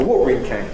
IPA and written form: ˈwɔːʔrɪn kæn (watering can)